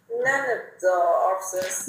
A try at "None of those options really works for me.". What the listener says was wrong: Đấy, sai rồi. None of those, chị chưa xì chữ those. Nó dẫn đến cái hệ quả là chữ options chị không nối được. Options là số nặng.